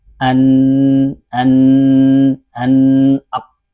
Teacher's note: Ka, qa itu di pangkal lidah, sedangkan nun itu di ujung lidah. · Ujung lidah itu nempel di langit-langit agak dekat dengan gusi. Gusi bagian atas.